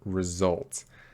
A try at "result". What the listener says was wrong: your l r here got a little strange so can we say this one more time